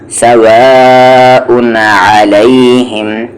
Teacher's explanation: مد اے یہاں پر واجب ہے، کھینچنا ہے آپ کو یہاں پر